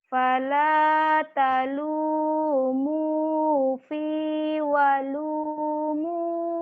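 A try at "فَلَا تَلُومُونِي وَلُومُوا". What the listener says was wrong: Bukan fi tapi ni.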